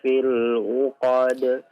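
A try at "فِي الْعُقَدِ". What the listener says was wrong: Ainnya afwan diperjelas.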